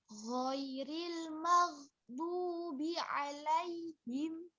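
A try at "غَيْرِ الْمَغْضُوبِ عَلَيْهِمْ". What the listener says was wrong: Diingat-ingat saja, jangan berhenti. Jangan ghairil mag. Nah, itu berhenti. Tapi ada pengalirnya juga dia. Nah, di sini ada huruf apa ini? Bod. Makharijul hurufnya di mana, Mbak? Enggak, di samping ya. Ya, di samping ya. Iya, di samping nempel ke mana?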